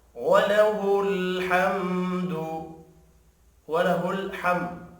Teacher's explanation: میم ساکن کے بعد دال ہے، اظہار شفی ہوگا، غنہ نہیں ہوگا